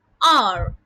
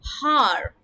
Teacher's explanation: the letter H is silent in the pronunciation of the word